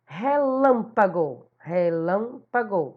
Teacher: ela é uma proparoxítona ela está bem na terceira sílaba da palavra